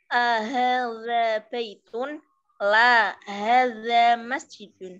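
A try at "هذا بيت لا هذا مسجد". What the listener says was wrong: Ya, bagus.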